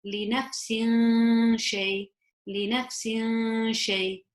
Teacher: I would hide that kasratain sound into the sheen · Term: ikhfa